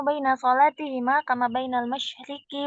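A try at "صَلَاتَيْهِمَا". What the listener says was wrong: Bukan solati, solatai. Kan dua, solatani, solataini, nunnya dibuang karena mudhof kepada huma ya. Yakunu baina solataihima gitu ya. taihima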